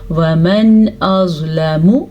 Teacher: نون ساکن کے بعد حمزہ آ گیا ہے تو نون ساکن کو ظاہر کر کے بغیر غننے کے پڑھیں گے، وَمَنْ أَظْلَمُ، میم کو لمبا نہیں کرنا، لام کو بھی لمبا نہیں کرنا کیونکہ ان کی مقدار اتنی ہی ہے۔